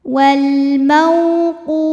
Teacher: ada wau sukun didahului baris fathah maka dibacanya lembut atau lunak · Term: harfulin